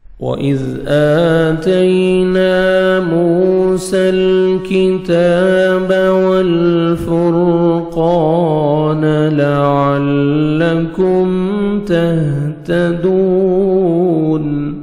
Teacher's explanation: واو پہ لپس کو راؤنڈ میں لے کے جائیں گے، ذال کو نرمی سے ادا کریں گے۔ وَإِذْ، حمزہ کو مر کھڑا زبر ہے، ایک الف کے برابر 1 سیکنڈ کھینچیں گے، تا کو باریک پڑھیں گے، یا لین ہے نرمی سے ادا کریں گے، الف مدہ، نون کو 1 سیکنڈ کھینچیں گے۔